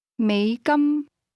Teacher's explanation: a low tone that rises to a high level.